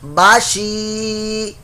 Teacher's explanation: یا ساکن سے پہلے زیر آ گئی تو یہ یا مدہ بن گیا, لمبا کریں گے